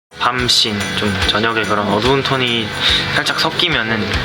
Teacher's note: Especially his S sounds can sometimes sound almost like a TH.